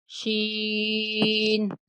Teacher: شین وسط زبان اور بالمقابل اوپر کا تالو وہاں سے ادا ہوتا ہے